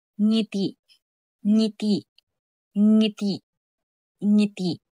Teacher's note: at n na ang dila ay sa likod ng ngipin n n gaya ng salitang nasa nasa at nang na ang likod ng dila sa ngala-ngala hangin sa ilong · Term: pailong